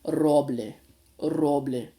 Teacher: it doesn't have a like a rounded R sound like we have in English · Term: trilled sound